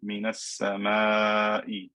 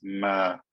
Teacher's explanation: I can never make this alif fat because this mim will never be a fat letter.